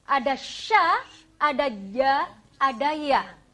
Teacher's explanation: Syajariyah itu adalah tengah lidah. Nah, di makhraj syajariyah ini, tengah lidah menyentuh langit-langit atas kita